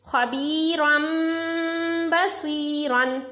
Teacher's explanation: اس میں آپ دیکھیں تنوین کے بعد با ہے تو تنوین کی آواز کو بھی میم سے بدل کر غنہ کریں گے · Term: اقلاب